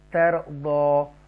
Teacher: یہاں پر تفخیم کریں گے, را کو پر پڑھیں گے کیونکہ را ساکنہ سے پہلے زبر ہے